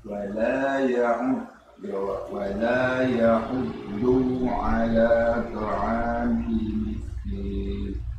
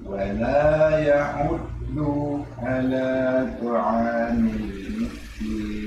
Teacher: Jadi ketika baca du, ya, ini kayaknya kebawanya dengan nada. Jadi agak sedikit panjang dunya.